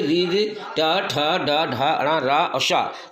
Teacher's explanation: ये मूर्धा से टकरा करके जब जिह्वा निकलती है तो उसको कहते हैं मूर्धन्य व्यंजन, मूर्धन्य वर्ण।